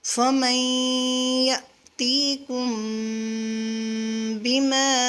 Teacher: میم ساکن اس کے بعد با آ رہی ہے تو یہاں پر غنہ کریں گے۔